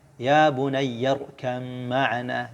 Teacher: Jadi dibaca irkam ma'ana, ba idgham ke dalam mim ya. Ya bunayyarkam ma'ana. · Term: idgham mutajanisain